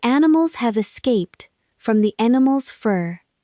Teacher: The is quick, animals has one stress, have is tiny, escaped is big